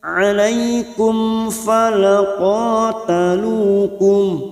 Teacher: Alaikum ya huruf fathah bertemu ya sukun huruf lain kita lunakkan. alaikum mim sukun bertemu fa idhar safawi mim sukun dibaca jelas